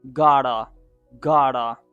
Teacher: the T comes in between the two vowel sounds and it sounds like duh in American accent